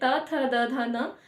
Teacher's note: त वर्ग में हमारा दांत का यूज हो रहा है, जैसे जीभ दांत में लग जाए